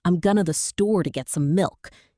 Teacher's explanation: compressing going to into a quick gonna, and barely even pronouncing the smaller connecting words